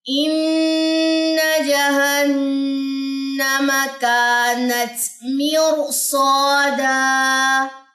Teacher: سو موٹا ہوگا اور ساتھ میں الف بھی موٹا پڑا جائے گا